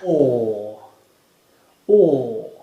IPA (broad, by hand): ɔ: